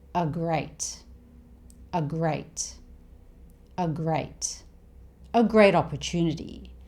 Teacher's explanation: These small words tend to be shortened when spoken. So here, a becomes a, the schwa sound.